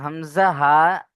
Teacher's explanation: হামজা হা কন্ঠনালীর শুরু হতে উচ্চারণ হয়